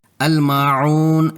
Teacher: الماعون میں میم کی زبر اور بعد کا الف سے الف مدہ ہے اور بعد کا واو ساکنہ سے واو مدہ ہے، دونوں کو 2 حرکات کھینچ کر پڑھنا ہے